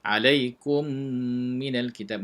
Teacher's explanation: mim mati bertemu dengan mim, idgham mithlain, kena baca dengan dengung